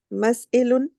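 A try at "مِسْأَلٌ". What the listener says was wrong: No, with kasra. Mis'alun.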